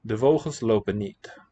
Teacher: This word final N is very often going to be dropped when you've got a consonant following, maybe elsewhere too.